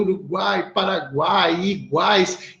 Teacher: juntas isso falando à grosso modo Porque como ela é constituída é uma semivogal uma vogal e uma semivogal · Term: tritongo